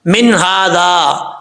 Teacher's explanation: من ھذا، نون ساکن ہے، اس کے بعد ہا ہے. نون ساکن کے بعد اگر ہا آ جائے تو نون کو ظاہر کر کے پڑھا جاتا ہے. ایسا نہیں پڑھنا من ھذا، یہ غلط ہو جائے گا.